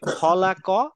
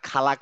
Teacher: যখন ফাতা থাকে বা জবর থাকে তখন সেটা অ টাইপের উচ্চারণ হয় আ উচ্চারণ হয় না যেমন আমি যদি বলি খলাক আমি বলবো না খালাক বলবো না